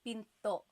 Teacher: Do you hear the glottal stop when I say pinto?